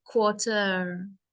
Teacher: if you want the American accent then the ER is pronounced more